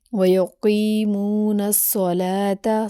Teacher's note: قاف کو موٹا کر کے ادا کریں گے، باریک کاف نہیں ہے بلکہ موٹا کاف ہے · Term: موٹا قاف